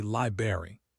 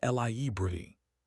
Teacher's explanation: The first R is actually there, sitting between the B and the A, and we need to acknowledge it. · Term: 3 syllables